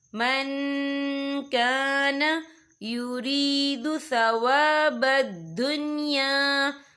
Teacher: مَنْ كَانَ، یا دیکھیں من، یہاں نون ساکن ہے، نون ساکن کے بعد جو ہے کیف آ رہا ہے، اور کیف جو ہے اکفا کا ورڈ ہے تو ہم یہاں اکفا کریں گے، نون ساکن کی آواز کو ناک میں چھپائیں گے